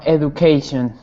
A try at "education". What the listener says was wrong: One small thing, education. It's got like a Jew sound, education.